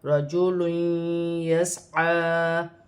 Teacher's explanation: دو پیش کی تنوین کے بعد یا مشدد آ رہی ہے تو یہاں پر دو پیش کی تنوین میں غنہ کیا جائے گا